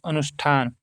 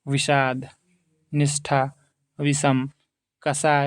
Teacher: हिंदी में अब मूर्धन्य वर्ण स जो है का उच्चारण स के तालव्य स के समान होता है। ये जो स लिखा है मूर्धन्य स वर्ण उच्चारण में नहीं है, पर लेखन में है।